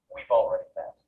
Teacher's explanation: when it comes after a pronoun, have often loses its vowel sound altogether. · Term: weak pronunciation of have